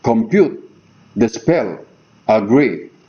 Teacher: Iamb is a metrical foot composed of 2 syllables. The first one of which is unstressed, and the second of which is stressed.